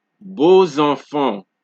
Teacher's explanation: X before a vowel of another word is pronounced, like Z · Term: Z sound